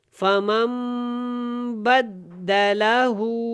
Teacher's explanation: یہاں پہ دیکھیں یہ جو چھوٹا سا میم لکھا ہوا ہے اس کو ہم نے اس میم کے ساتھ ملانا ہے، اور یہاں پہ کیا کرنا ہے، اقلاب اور غنہ کے ساتھ ادا کرنا ہے، اور بدّا اچھی طرح ملانا ہے. لہو کی ہا الٹا پیش جو ہے اس کو لمبا کریں گے